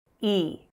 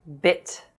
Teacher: /i:/ is tense and /ɪ/ is lax. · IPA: /i:/ /ɪ/